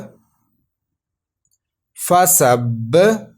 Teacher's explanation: فا زبر فا، سین با زبر سب، فسب. یہ جو با ہے یہ کلکلا مشدد لیٹر ہے اس لیے ہم نے اس کو جما کے کلکلا کیا